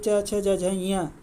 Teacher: च छ ज झ ञ का उच्चारण स्थान तालु होता है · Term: तालव्य